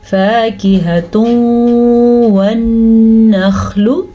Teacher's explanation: نون تنوین کے بعد جناب واو آیا ہوا ہے تو اس لیے ان کو آپس میں ہم ملا دیں گے تو ادغام ہو جائے گا، اور واو پہ غنہ کریں گے تو ادغام بالغنہ ہو جائے گا